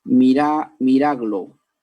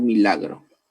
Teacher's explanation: Ha habido un intercambio de ubicación. La R pasó al final y la L pasó al inicio. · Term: metátesis